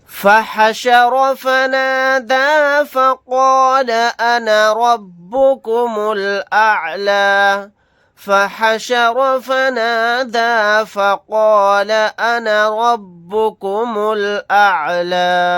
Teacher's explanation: یہاں پر را کو موٹا یعنی پر پڑھیں گے، قاف کو بھی موٹا یعنی پر پڑھیں گے